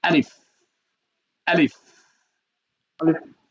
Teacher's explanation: উচ্চারণের শেষের দিকে লাগবে কিসের সাথে লাগবে সামনের উপরে দুই দাঁত নিচের ঠোঁটের বিজ অংশে লাগবে